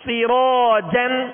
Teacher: سین کو باریک پڑھیں گے اور را کو پر کریں گے. را کے ساتھ الف مدہ ہے، لہذا الف کو بھی را کی وجہ سے پر پڑھیں گے.